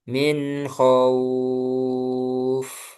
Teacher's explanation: min khauf itu enggak perlu dijedak. Min khauf disambung.